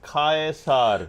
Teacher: The emphasis is typically on the first syllable Kai.